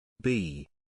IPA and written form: biː (Bee)